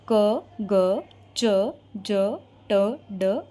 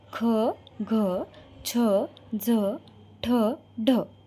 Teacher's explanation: अल्पप्राण म्हणजे काय शब्द उच्चार करताना प्राणवायूचा अल्प उपयोग होतो तेच महाप्राण मध्ये खूप जास्त उपयोग करायला लागतो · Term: अल्पप्राण आणि महाप्राण